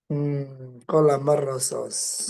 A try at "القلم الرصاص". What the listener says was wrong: Rosos kurang ini teman-teman ya, kurang alif. Qalamar rososi. Shot yang pertama panjang. Qalamar rososi atau qalamar rososin.